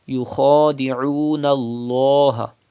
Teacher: You have to pronounce lam with thicker voice.